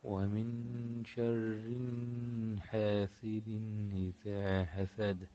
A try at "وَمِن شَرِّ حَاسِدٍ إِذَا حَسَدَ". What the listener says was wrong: এখানে শাররিন এখানে গুণনা হবে না শাররি ওয়ামিন শাররি হাসিদিন ইযা হাসাদ ومن شر حاسد إذا حسد শাররি এখানে টান হবে না ومن شر حاسد إذا حسد